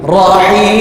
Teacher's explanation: Dihabiskan putus suara dengan merapatkan kedua bibir mulut. Rapat dua bibir itu sekejap je, bukan lama.